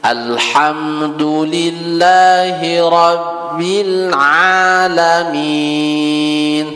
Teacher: Ainnya agak dilembutin dikit lagi, biar enggak seolah-olah jadi hamzah. Kalau alamin itu agak ke hamzah.